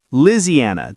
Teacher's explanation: Some Southern speakers say Liziana, dropping a syllable.